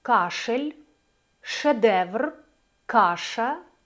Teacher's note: звук Ш у нас є шумним глухим передньоязичним і фрикативним